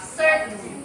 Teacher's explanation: T is unreleased or held before N